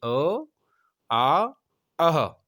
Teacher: आपके बोलने में जो कंठ है वहाँ से ध्वनि निकल रही है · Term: कंठय्य वर्ण